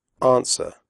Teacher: The W sound is silent.